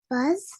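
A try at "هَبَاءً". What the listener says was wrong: Okay, so when you say fuzz, your tongue is touching nowhere. But if you were to touch your tongue at the top of your teeth, your top teeth, if you touch it there, fuzz, haba.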